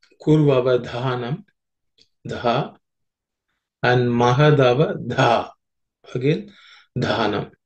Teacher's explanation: the dha and dhi are aspirated, so it requires a little more air when you pronounce them